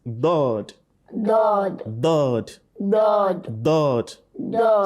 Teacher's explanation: either both edges or one side of the tongue touches the premolar and molars. Okay, so most particularly the left side, you let it touch the premolar and molars.